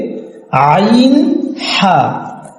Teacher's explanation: 2 নম্বর মাখরাজ, হলকের মধ্যখান হইতে আইন হা। 3 নম্বর মাখরাজ, হলকের শেষ ভাগ হইতে গইন খ।